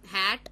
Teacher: a narrowing causing friction between the two vocal cords that produces a glottal sound her is the only sound in English which is a glottal